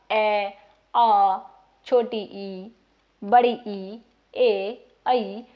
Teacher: इसमें हमारे जो होठ होते हैं वो व्रत मुखी नहीं होते गोलाकार नहीं होते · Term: आवृत मुखी